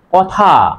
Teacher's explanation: এই থটা হচ্ছে মহাপ্রাণ ধ্বনি, বাতাসের চাপটা বেশি লাগে